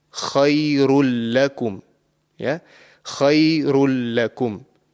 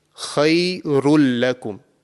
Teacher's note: the tanween sound, which is the noon sakin, would not be produced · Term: completely assimilated